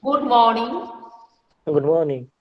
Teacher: generally जब हम लोग मतलब कि अननोन पर्सन को देखते हैं तो राइजिंग रहता है